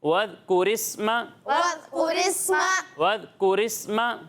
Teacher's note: ذال میں سیٹی کی آواز نہیں آئے گی، سین میں سیٹی کی آواز آئے گی